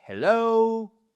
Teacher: j'ai un peu forcé sur la seconde syllabe, mais c'est pour marquer cette accentuation sur la seconde partie